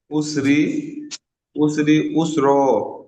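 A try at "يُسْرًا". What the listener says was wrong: উসরি ইউসরা, এটি হলো ইয়া। হ্যাঁ, এটি আইন, আইন থেকে উ হয় আর ইয়া থেকে ইউ হয়, তাহলে আইন সিন পেজ উস হচ্ছে, তাহলে ইয়া সিন পেজ ইউস হবে, তাহলে উসরি ইউসরা।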